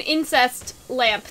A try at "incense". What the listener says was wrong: Incense. You said incest lamp. is an incest lamp,